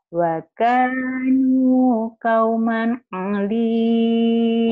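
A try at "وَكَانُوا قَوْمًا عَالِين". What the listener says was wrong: Wa kanu k-nya panjang, nu-nya panjang. Wa kanu kauman alin. A-nya panjang. Wa kanu. Wa kanu kauman alin.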